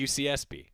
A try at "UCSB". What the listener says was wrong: There's too much emphasis on the S.